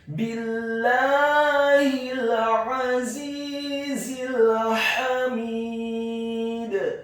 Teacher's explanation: ada huruf dal yang sukun, maka wajib untuk diqalqalahkan atau dipantulkan